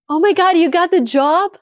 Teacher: That upward melody shows genuine excitement.